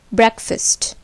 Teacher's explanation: But in breakfast, the part fast is almost like first. This is because the accent or force falls on break and it becomes breakfast.